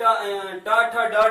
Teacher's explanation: ट ठ ड ढ जहां से निकल रहा है वही मूर्धा का मूल भाग होता है।